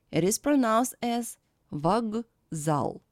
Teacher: The voiceless K stands before a voiced Z. That's why it is changed in voiced pair G. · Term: assimilation